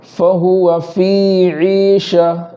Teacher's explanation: فی میں جو ہے یا مدہ ہے تو وہاں ایک الف کے برابر تاخیر کریں گے